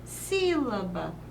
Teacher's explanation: não temos a última não temos a penúltima mas temos a antepenúltima sílaba tônica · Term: proparoxítona